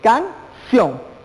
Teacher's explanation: Vemos la fuerza de voz y el acento ortográfico en ción. Por ende, esto se convierte en una palabra aguda.